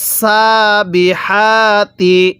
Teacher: ওয়াস সাবি হা খারা জবর হা তা জের তি ওয়াস সাবিহাতি এই হা টা উচ্চারণের সময় মুখ দিয়ে হালকা বাতাস বের করব